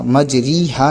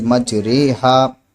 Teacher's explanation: میم جیم زبر مج را امالہ والی رے مج رے، ہا الف زبر ہا مج رے ہا، ہے نا، اس طریقے سے ہمیں پڑھنا ہے اس کو، مج رے ہا، مج ری ہا نہیں کرنا ہے، کیونکہ امالہ کی را کو اردو کے لفظ قطرے کی را کی طرح پڑھنا ہے، یعنی ری نہیں پڑھنا بلکہ رے پڑھنا ہے